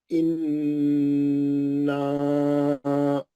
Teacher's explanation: नून मुशद्दद है, गुन्ना है, नून मुशद्दद है, गुन्ना है। उसके बाद नून के जबर के बाद अलिफ है, वो मध्य असली है